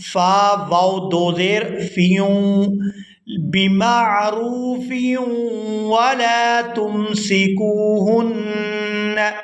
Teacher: یہاں فا کو واو مشدد کے ساتھ ملائیں گے تو غنہ کریں گے۔